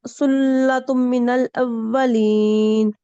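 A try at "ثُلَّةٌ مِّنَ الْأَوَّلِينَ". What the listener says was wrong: ये पहले भी आप मिस कर गए, अब भी मीम मुशद्दद है, तो यहाँ हम क्या करेंगे? बिल्कुल करें गुन्ना।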